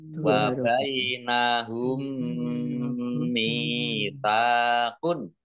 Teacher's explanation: Nah, mim sukun bertemu dengan huruf mim, ini idgham mutamatsilain atau idgham mimi, masuk langsung ke huruf mim yang kedua, ditandai mimnya ada tasdidnya, dibaca hunah atau mendengung. Biar tampak dengungannya maka harus ditahan kurang lebih 2 harokat.